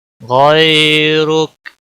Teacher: را کے اوپر پیش ہے اس لیے پر پڑھا جائے گا، موٹا پڑھا جائے گا، اور رکنے کی صورت میں کاف ساکن ہوگا